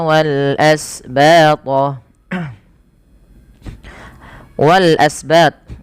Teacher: wal asbat alif lam yaitu alif lam qamariah yang di mana ada Alif bertemu dengan Hamzah ini dibaca dengan jelas lamnya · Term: izhar qamariah